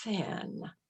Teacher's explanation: some have th unvoiced just blowing out